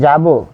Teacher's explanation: ক্রিয়াপদের অন্ত ওরূপে উচ্চারিত হয়